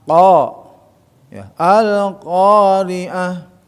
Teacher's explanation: qo sama Ka tapi pangkal ya terangkat itu kan kemudan juga huruf q itu huruf alistilla ya huruf yang terangkat lidahnya · qo jangan k ya tidak ada sifat Hames di situ ya sifat syidah Qalqalah yang kuat yang mantul